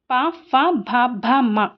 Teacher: పెదవుల నుండి పుట్టినవి ఓష్ట్యాలు